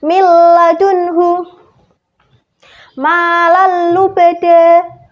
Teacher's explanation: ada nun sukun bertemu lam dan juga ada tanwin bertemu lam. Jadi harus dibaca jelas dan dimasukkan karena itu idgham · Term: idgham bila gunnah